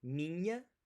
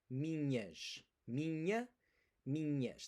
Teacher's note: That NH is that very particular Portuguese sound. It's the ny sound in canyon or onion.